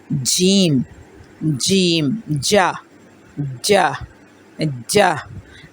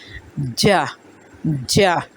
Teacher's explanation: زبان کا درمیانی حصہ اپنے مد مقابل تالو سے ٹکرائے گا، ٹکرا کے ہٹ جائے گا،